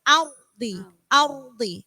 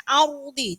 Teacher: cukup sekali Auri Auri Jadi jangan terlalu lama auroti atau arrty Jadi enggak boleh lebih dari satu kali getarannya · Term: getarannya cukup sekali